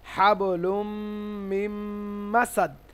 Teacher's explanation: তানভীনের পরে মিম এসেছে লামের সঙ্গে মিম মিলে যাচ্ছে লুম ইদগাম মিলানো ইদগাম মানে মেলানো কিন্তু এখানে